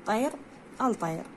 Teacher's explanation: راح تكون حرف مماثل للحرف طاء، فتصبح لام التعريف طاء. ثم يدغم، يعني يصير سوية يندغم سوية يندمج كأنما دمج للحرف، يصبح حرفا واحدا مشددا، وتلفظ على نحو الآتي: طير الطير. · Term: إدغام اللام الشمسية